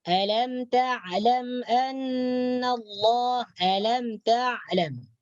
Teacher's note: Ain makhrajna yaitu di bagian halqum bagian tengah. Bagian tekak paling tengah.